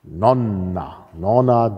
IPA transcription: ˈnɔnːa